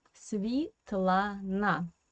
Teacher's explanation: Svetlana, the first syllable is a non-stressed position. That's why this E we pronounce as I.